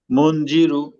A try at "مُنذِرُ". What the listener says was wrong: হ্যাঁ মঞ্জিরু না, এই মঞ্জির গুণা করতে হবে। মন নরম নরম, জিব্বা আগে দেখা যাচ্ছে না কেন? মন মন রিরু রিরু মন রিরু মন,